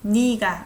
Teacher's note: I pronounce it as 니, not 내